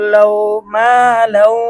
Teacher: কা মিম আলিফ জবর মা লাম মাউদু জবর লাউ মা লাউ তানবিনের পরে ইদগামে বাগুন হরফ ওয়াও আসছে গুণনা সহ মিলিয়ে পড়তে হবে